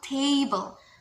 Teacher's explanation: So the stress is in the first syllable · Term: trochaic